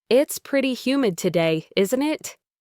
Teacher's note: For example, it's pretty humid today, isn't it? Here, a rising intonation on isn't it is used if you're truly asking for confirmation because you're feeling cold and want to know if others agree.